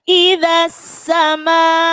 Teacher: Tajwidnya mad wajib muttasil. Mad wajib muttasil di mana panjangnya yakni 2,5 alif atau 5 harokat. Kalau lebih gampangnya 5 ketukan.